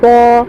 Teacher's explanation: کھڑا زبر برابر ہے الف مدہ کے 1 الف کی مقدار کھینچ کر معروف پڑھیں گے